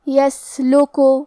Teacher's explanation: کلمت یسلک میں یہاں سین ہے اور اس پہ جزم ہے تو ہمیں یہاں سین کو ہمزے سے پڑھنا ہے اور ہمزے کا معنی ہے کہ حرف کی آواز ایسے کمزور ہو کہ اس میں پستی پائی جائے